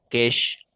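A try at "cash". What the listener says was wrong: नहीं, केश नहीं, केश नहीं होगा, कैश होगा, कैश। हाँ, ये अगर केश ये जब होगा जब इसके लास्ट में ई लग जाए, तो इसको खींच के पढ़ेंगे केश। ठीक है, कि केश नहीं, कैश है।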